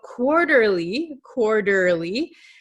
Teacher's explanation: So quarterly quarterly, this T is going to become a flap T. So it sounds like an English um soft D sound. In your country it might sound like an R but in English it sounds like a soft D.